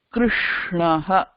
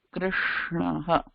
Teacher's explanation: கிருஷ்ணஹ அப்படிதான் சொல்லணும். ஏன்னா கிருஷ்ணல இருக்கிற ஷ மூர்தா யூஸ் பண்ணி தான் சொல்லணும்